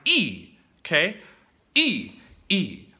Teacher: Also, the fourth tone is super short. It's quick, it's exaggerated, it's a drop, it's like E, okay?